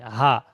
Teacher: হা, হা বলার সময় দেখবেন, হা বলার সময় দেখবেন সিনার কাছে একটা আওয়াজ হচ্ছে হা, পুরো গলার শেষ ভাগে নিচের দিকে · হামজা হা হলক বা কণ্ঠনালীর শুরু হতে উচ্চারিত হয়। হলক কোনটা? এই গলা থেকে নিয়ে আর এই নিচে পর্যন্ত, যেটা হচ্ছে গিয়ে গলা, এটাকে বলা হয় হলক বা কণ্ঠনালী।